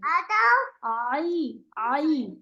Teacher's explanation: इसका ख्याल रखेंगी कि आइन पढ़ते हुए पहले से नाक में आवाज नहीं जाएगी।